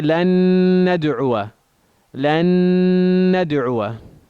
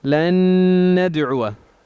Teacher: So we assimilate the first noon into the second one. So we say a shadda. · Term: complete idgham